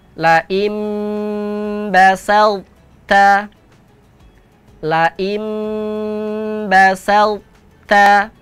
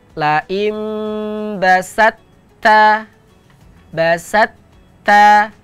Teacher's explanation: Huruf to tidak boleh dibaca qalqalah, dihilangkan qalqalahnya, tetapi sifat tebalnya pada huruf to itu tetap dibaca.